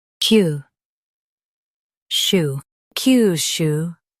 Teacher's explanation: Stress Q and keep shu soft. It's quick.